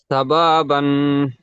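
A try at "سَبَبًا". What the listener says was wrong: সাবা কেন টান দিলেন সাবাবান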